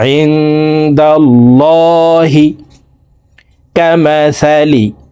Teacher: লামকে ল বলে পড়ব অর্থাৎ মোটা করে পড়ব